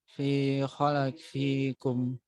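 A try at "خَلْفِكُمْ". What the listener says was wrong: Fi-nya kepanjangan. Fi khalfikum. Nah, fi yang ini kepanjangan.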